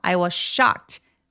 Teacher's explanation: Sh는 쌍쇼처럼 굉장히 세게 특히 강세가 오니까 세게 표현해 주세요